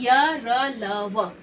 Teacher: अंतस्थ व्यंजन बच्चों वे व्यंजन होते हैं जिसका जो स्वर और व्यंजन के बीच का होता है। इसको बोलते समय हमारी जिह्वा जो है न तो बीच में रहती है, किसी भी भाग को पूरी तरह से टच नहीं करती है